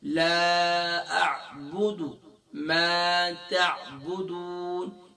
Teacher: تو عین کو ادا کرتے وقت گلے کے مڈل سے ادا کریں گے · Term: عین کا ساؤنڈ